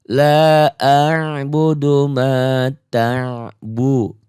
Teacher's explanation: Ta-nya jahar dibaca kuat tegas, bu-nya qasar pendek, du-nya mad tabi'i. Tapi mad tabi'i ini berubah menjadi mad arid disukun karena berhenti membacanya.